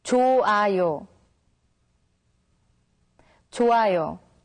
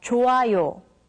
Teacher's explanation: When the character hyut meets with iung, the character hyut becomes silent, so it's pronounced as 좋아요.